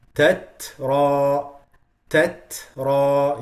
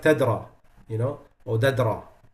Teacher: the second ta, because it has sukoon, we make additional whisper on it.